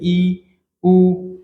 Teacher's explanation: तो इसमें संवृत स्वर होते हैं, मुख द्वार लगभग बंद, बिल्कुल बंद सा संकरा हो जाता है